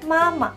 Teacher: 2つ目のマの方がワントーン下がるんですね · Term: 形声